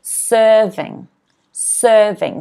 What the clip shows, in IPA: ˈsɜːrvɪŋ